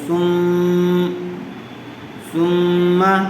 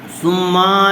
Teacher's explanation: غنہ کہتے ہیں، ثم۔ تو آواز کو تھوڑی دیر ناک میں روک کے رکھیں گے